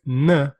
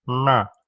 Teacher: So when you say pramana, it's not the dental N, na, it's na, na. Hear the difference between the dental N, na, and the retroflex N, na.